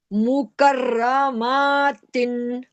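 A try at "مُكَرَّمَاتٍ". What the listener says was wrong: मुकर्रमातिन, मीम को मत खींचे। मीम को नहीं खींचना, फौरन पढ़ना है। मी और रॉ को मोटा पढ़ना है, मुकर्रा, रा नहीं बोलना। काफ को मोटा नहीं करना, रॉ को मोटा पढ़ना है। काफ को रॉ से मिलाएं, पहले रॉ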